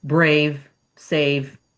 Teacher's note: the diphthong A, which is an I and then an E sound, that's a diphthong, two sounds in one. It's a long A, like A, brave, save, that kind of thing.